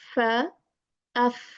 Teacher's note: front two teeth edges just touch the lower lips